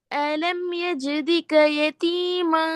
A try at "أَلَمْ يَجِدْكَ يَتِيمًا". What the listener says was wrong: எஜிதுக தாலுக்கு இதுட sound வரும். எஜிதிக்கன்னா நீங்க தாலு கஷ்டத்துன்னு வச்சு ஓதுறீங்க. அது பிழை ஏது?